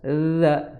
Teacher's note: di ujung gigi seri atas za ya, sedikit dikeluarkan ujung lidahnya yang ada titiknya itu. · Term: za lembut